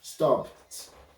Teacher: because of the P is a voiceless sound, so it will be pronounced as T.